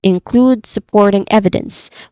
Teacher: include supporting evidence with strong stress on include port and ev